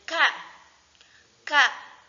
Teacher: Pangkal lidah menyentuh langit-langit belakang